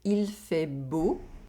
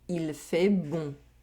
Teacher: Here, we have an oral vowel sound and a nasal vowel sound. We have the [o] sound in the first sentence, and the [ɔ̃] sound in the second sentence.